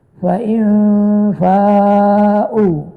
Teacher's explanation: nun mati bertemu dengan fa itu ikhfa hakiki